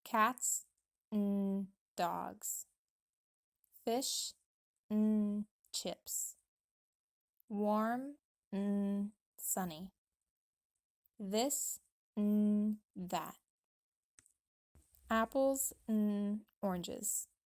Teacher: the second time i reduced the word and to a short n sound in order to emphasize the nouns